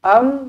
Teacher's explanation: mim mati izhar syafawi dimatikan dengan jelas dan terang